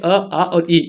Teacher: इन स्वरों के उच्चारण में हवा केवल मुंह से निकलता है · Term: मौखिक स्वर